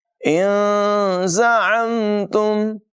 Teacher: ان زعمتم، یہاں نون ساکن میں اخفا ہوگا، زا میں سیٹی کی آواز نمایاں ہوگی، عین کی آواز بھی نمایاں کریں گے